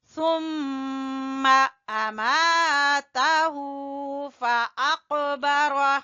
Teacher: ہو کو الٹے پیش کی وجہ سے کھینچیں گے